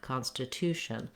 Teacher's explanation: I have a little bit of length here and the clear vowel on my con syllable so letter O typically does say vowel a when it's stressed